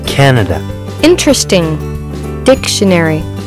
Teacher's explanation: voici des mots qui sont accentués sur la première syllabe